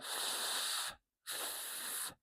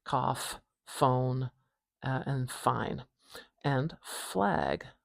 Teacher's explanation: We put our top teeth behind our lower lip and push the air out and make a kind of turbulent whispering sound, I guess. And we don't have any vibration at our throat. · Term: voiceless sound